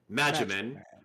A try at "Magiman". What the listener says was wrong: Magiman, not Magic Man.